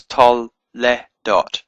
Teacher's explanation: So it's tol le dot. It's a very short eh sound and then dot. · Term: vocal shiva